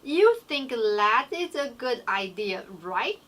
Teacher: when you have tag questions, the check part is the rising sound. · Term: rising intonation